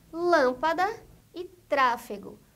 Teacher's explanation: Palavras proparoxítonas. São palavras cujo a antepenúltima sílaba é a mais forte